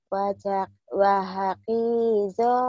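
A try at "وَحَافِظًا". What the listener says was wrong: Ki melulu. Ini bukan ki. Titiknya satu. Fa. Kalau titiknya dua berkok. Wahafizo.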